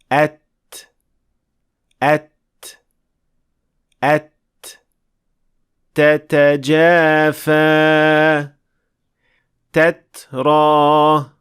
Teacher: ता के बाद एक बहुत ही मध्यम सी आवाज आती है। हम इसे हम कहते हैं और यह बुनियादी तौर पर हवा का एक छोटा सा झोंका होता है।